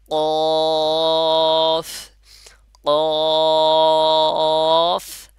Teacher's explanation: জিহ্বার গোড়া উপরে যে নরম তালুটা আছে সেখানে লেগে কি উচ্চারণ হবে কফ উচ্চারণ হবে